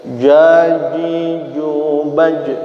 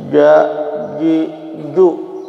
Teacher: jimnya ada di tengah lidah huruf makhrajnya ja, tapi sifatnya termasuk jahar. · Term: huruf jim